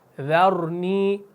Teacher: را کو موٹا پڑھنا ہے کیونکہ ذال جو ہے یہ باریک ہے. پہلے ذال کو باریک پڑھنا ہے، ذرنی، را کو پھر موٹا پڑھنا ہے.